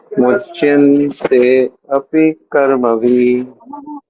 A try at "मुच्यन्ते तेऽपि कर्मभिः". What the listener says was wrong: मुच्यन्ते again te is there मुच्यन्ते तेऽपि कर्मभिः